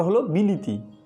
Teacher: বিলাতি হয়েছে প্রথমে বিলেতি, পরে আবার পরবর্তী স্বরধ্বনি অর্থাৎ তয়ের সঙ্গে যুক্ত হ্রস্বইয়ের প্রভাবে লয়ের সঙ্গে যুক্ত এ হয়েছে হ্রস্বই, ফলে বিলেতি হয়েছে বিলিতি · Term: অন্যান্য স্বরসঙ্গতি